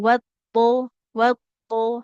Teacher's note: huruf dotnya harus mengalirkan suara ya, karena dia sifatnya rokoa